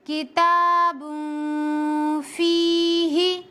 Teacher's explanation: नून की आवाज को नाक में छुपा कर पढ़ेंगे। मैंने इसी तरीके से यहाँ पर इख्फा किया है और जबान को हवा में रख कर, यानी मैंने जबान को हवा में रख कर इख्फा किया है।